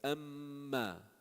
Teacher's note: when you hold it, it goes up to the nose. M goes from the lips. That's why they are called in between.